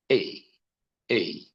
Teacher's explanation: o som Dessa letra é um som de um I mais curto do que o i vogal porque isso aqui corresponde a um I semivogal Então é ei ei é o som dessa partícula né Desse